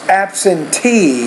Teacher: So the last syllable is stressed